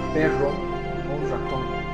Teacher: en la zona sureña la vibrante que más se va a utilizar es la sibilante